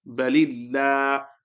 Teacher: Then you can say before the lam of Allah, if a kasra appears, and lam of Allah will be recited with an empty mouth, so the pronunciation will remain the same.